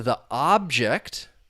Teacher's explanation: the stress is on that first syllable now that it's a noun